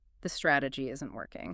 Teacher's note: so many people will let their pitch drift up at the very end of a factual sentence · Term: uptalk